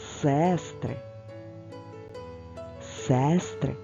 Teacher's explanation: звук е наголошений тож промовляється чітко